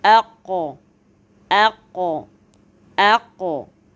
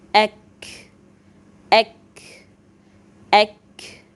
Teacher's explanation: Le qaf est plus proche de la gorge alors que le kaf est plus proche des lèvres